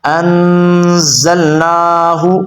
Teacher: نون کو آپ نے تھوڑا سا لمبا کرنا ہے کیونکہ اوپر کھڑا زبر ہے